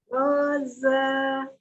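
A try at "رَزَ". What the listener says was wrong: Roza tidak dipanjangkan. Kalau mau dipisah. Roza. Kalau disambung. Roza. Nah, tetap dia satu harokat. Masih belum lembut zanya ya. Ya, jangan ada penekanan. Tadi zanya cuma ada apa? Asofir, desis. Za, tapi jangan di za begitu ya. Roaza, za, lembut mengalirnya walaupun dia ada asofirnya za.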